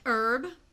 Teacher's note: the H is silent to me